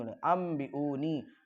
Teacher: हमज़ा के बाद वाव हरफ मद, इसको थोड़ा सा खींचेंगे। नून के बाद या हरफ मद, इसको भी थोड़ा खींचेंगे। · नून साकिन के बाद बा दूसरे कलमे में आता है, यहाँ पर इक़लाब होगा, यानी नून साकिन को मीम से बदल देंगे। अन पढ़ने की वजह अम पढ़ा जाएगा, हमज़ा से मीम अंबिऊनी, हमज़ा के बाद वाव हरफ मद, इसको थोड़ा सा खींचेंगे।